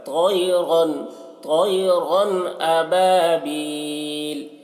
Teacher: तो की आवाज़ मोटी होगी, तो को मोटा करके पढ़ना